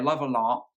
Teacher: you don't pronounce the T so it sounds like she's saying I love Allah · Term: glottal stop